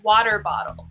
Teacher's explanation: the word water, w-a-t-e-r, sounds like w-a-d-e-r, almost.